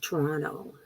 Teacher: toronto right the second t gets dropped